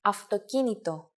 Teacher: the word αυτοκίνητο, which means car, is said with an af sound, not an av sound